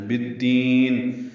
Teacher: با کو دال سے ملانا ہے، ادغام شمسی الف لام نہیں پڑھیں گے، دال کو لمبا کریں گے اور نون کی زیر ساکن ہو جائے گی، یعنی نون ساکن ہوگا، اس پہ اظہار ہوگا.